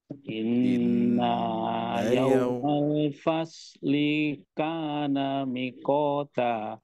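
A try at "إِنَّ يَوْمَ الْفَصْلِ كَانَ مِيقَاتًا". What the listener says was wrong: Mi-nya panjang di sini, Pak. Miqata.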